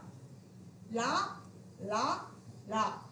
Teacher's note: வந்து தொட்டுச்சு அப்படின்னு சொன்னோம்னா லா அப்படின்னு சொல்லுவாங்க மேல் பற்களோட அடியை தொடுவதால் மேல் பற்களோட அடியை தொடுவதால் லா பிறக்குது